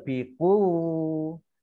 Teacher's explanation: Biquwwatiw, ini wawunya dibaca double, biquwwatiw, marbutoh kasroh tanwin bertemu dengan wawu, ini idghom bighunnah ya, dibaca mendengung wawu